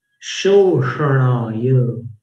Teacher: शो जीभ नीचे लेके तालु पे, तालु पर जोर देंगे। जीभ नीचे जब जाती है निचले दांत के पीछे, तो ऊपर दबाव पड़ता है।